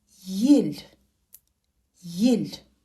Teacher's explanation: е мягкий гласный звук соответствует русскому звуку е в начале слова произносится как и